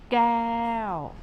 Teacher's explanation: It is not the K sound K, or it's not the G sound G in English, but it is in between K and G.